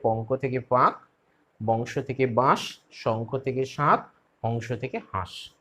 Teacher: শব্দের মধ্যে নাসিক ব্যঞ্জনের উপস্থিত থাকলে উচ্চারণের বিশেষ প্রবণতার কারণে নাসিক ব্যঞ্জন নিজে লুপ্ত হয়ে গিয়ে পূর্ববর্তী স্বরধ্বনিকে আনুনাসিক করে তোলে। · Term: নাসিকী ভবন